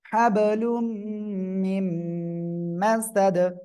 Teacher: নুন সাকিনের পরে ইদগামে বাগুন্নার অক্ষর মিম, গুন্নার সাথে মিলিয়ে পড়বেন।